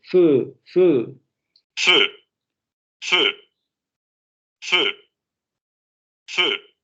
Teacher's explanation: Como solamente con la palabra fe. Si pronunciamos la palabra fe y redondeamos, sale este sonido.